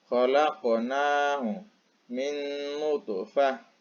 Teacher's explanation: Jadi to dengan ko dibaca memantul sedikit. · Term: qalqalah sughra